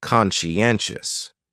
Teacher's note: So conscientious has 4 syllables, and the stress is on that third syllable, conscientious. That second syllable is what really confuses people because that sigh almost sounds like you're saying she